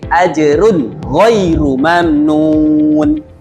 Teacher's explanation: dibacanya nun matinya dibaca jelas dibaca tanpa gunnah, tanpa dengung. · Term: izhar halqi